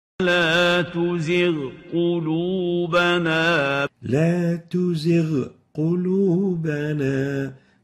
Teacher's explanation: clear, obvious ghain followed by a qaf, not merged together, not merging the two letters, the ghain and the qaf together. Each one pronounced independently and clearly. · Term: idgham